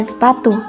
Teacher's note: dalam kata sepatu tekanan yang diberikan pada suku kata PA menghasilkan penekanan pada suku kata tersebut